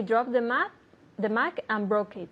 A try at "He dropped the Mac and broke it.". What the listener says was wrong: Exactly. Okay, now I didn't hear the T and dropped.